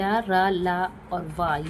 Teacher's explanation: इनके उच्चारण के समय जीभ जो है मुंह के आंतरिक भागों को बहुत ही हल्का सा स्पर्श करती है। इसलिए इन्हें अंतः व्यंजन कहते हैं।